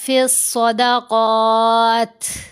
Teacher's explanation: جب یہاں وقف کریں گے پھر تا کے نیچے زیر نہیں پڑھیں گے، تا کو ساکن کریں گے، پھر ہمس کا اظہار ہوگا، یعنی تا کی آواز کو کمزور کر دیا جائے گا